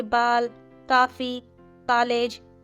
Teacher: आ तथा ओ के बीच की ध्वनि ओ को आगत स्वर कहते इसका प्रयोग केवल अंग्रेजी भाषा के शब्दों में किया जाता है